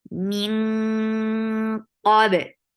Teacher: So you are keeping sound in your nose. You are not pronouncing noon and going towards the makhraj of qaf. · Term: heavy ikhfa